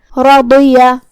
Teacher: بعد بھی حروف تفخیم میں سے ہے تو ہم را کو اور ضاد کو دونوں کو تفخیم سے ادا کریں گے